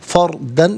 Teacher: را ساکن ما قبل فا پر زبر ہے، را ساکن کو پر کر کے پڑھا جائے گا